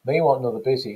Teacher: we've got the deletion of the unstressed syllable on another